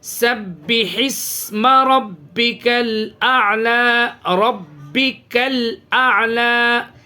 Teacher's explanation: یہاں پہ ہا نکالیں اور ہا کی آواز کو سین میں ملائیں